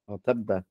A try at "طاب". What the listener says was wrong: No, because there's no shadda on the back. Taba. Alif. No, it's a taba. Taba. Taba.